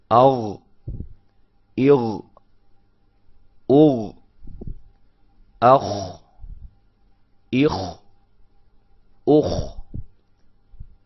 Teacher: یہ آپ کے منہ کے قریب والے حلق کے حصے سے ادا ہوتے ہیں